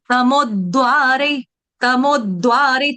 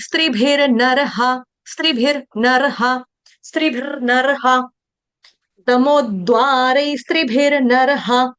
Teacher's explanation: तमोद्वारै, देखो तमोद्वारै, तमोद्वारै, तमो के ऊपर क्या है, वो है ना आपका आघात, तो डबल द आ जाएगा, आधा द 2 बार आएगा